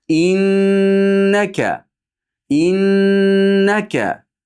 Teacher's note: Innaka deganda nunni g'unnasini aniq bildiramiz.